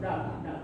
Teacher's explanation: जिन व्यंजनों के उच्चारण में जिह्वा ऊपर उठकर मूर्धा को स्पर्श करती है, स्पर्श करती हुई तुरंत नीचे गिरती है, ऐसा तुरंत नीचे गिरती है, उन्हें उत्क्षिप्त, उत्क्षिप्त का मतलब था ऊपर फेंके हुए, नाम से स्पष्ट उत्क्षिप्त ऊपर फेंके हुए, उन्हें उत्क्षिप्त व्यंजन कहते हैं।